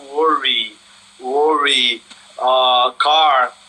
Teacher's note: É um inglês que, por exemplo, evita que nós tenhamos um outro padrão que não retroflexo em palavras como worry, car